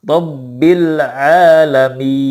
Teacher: Kalau mim dan nunnya sudah pasti ke hidung, tetapi ketika mad itu tidak boleh ke hidung.